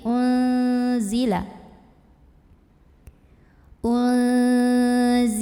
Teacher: Bima ada ikhfa ausat karena ada nun sukun yang bertemu dengan huruf zai. Maka nun sukunnya ini dibunyikan samar-samar menuju huruf zai sambil ada dengungannya. Jadi enggak jelas tapi unzila.